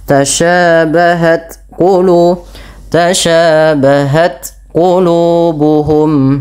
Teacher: matikan dulu ta-nya dengan syiddahnya baru dengan hamsnya